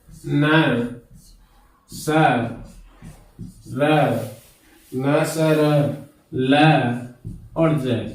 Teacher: वे ध्वनियां जिनका उच्चारण करते समय जीभ मसूड़े को स्पर्श करती हैं, वर्त से ध्वनियां कहलाती हैं